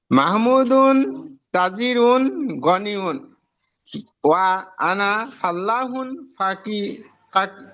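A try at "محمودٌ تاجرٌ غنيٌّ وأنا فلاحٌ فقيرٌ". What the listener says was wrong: মাশাআল্লাহ ভাইজান অনেক সুন্দর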